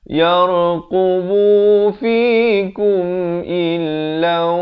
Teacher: Di sini masuk beserta dengung daripada illan jadi illau 2 harakat.